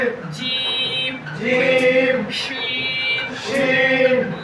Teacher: জিহ্বার মধ্যখান তার বরাবর উপরে তালুর সঙ্গে লাগিয়ে